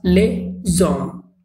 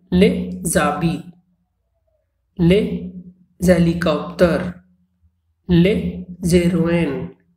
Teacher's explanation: And next we have O, which is a vowel. So here, S is pronounced as Z, that is a liaison.